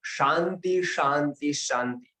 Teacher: वो श तालव्य वाला श है, वो तालू से बोला जाता है